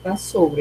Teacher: não tem como ouvi o som dos dois S, é o som de uma consoante só